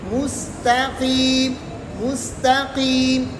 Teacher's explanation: یہ تا موٹا نہیں ہے، قاف موٹا ہے، تا باریک ہے، لیکن قاف بھی 5ویں درجے پر موٹا ہے.